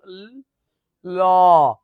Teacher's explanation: পার্ষিক মানে যে বর্ণ উচ্চারণের সময় আমাদের দুই পাশ দিয়ে বাতাস বের হয় · দুই পাশ দিয়ে বাতাস বের হয়, যেমন ল, দেখছো দুই পাশ দিয়ে বাতাস হচ্ছে